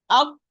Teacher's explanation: the ta is a heavy letter, so the back of the tongue will be raised.